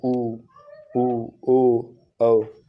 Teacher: वृत्तमुखी। जिन स्वरों के उच्चारण में ओठ वृत्तमुखी गोलकार होते हैं उन्हें वृत्तमुखी स्वर कहते हैं।